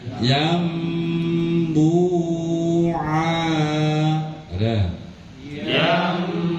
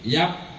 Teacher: nun bertemu ba itu nanti suara nun dirubah menjadi suara mim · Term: iqlab